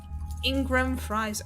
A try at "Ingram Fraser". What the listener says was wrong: Did you just call him Ingram Fries? You did not say Fraser, you said fries. No, you just said fries. You just cut off halfway through saying it.